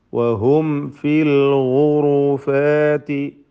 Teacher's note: സാക്കിന മീം ശേഷം ഫാ വന്നതിനാൽ ഇൽഹാർ ഷഫവി നൽകി മണിക്കാതെ വെളിവാക്കണം. സൂക്ഷ്മതയോടെ ഇൽഹാർ ചെയ്യേണ്ടതാണ്, അവ്യക്തമാവാൻ സാധ്യതയുള്ളതാണ്.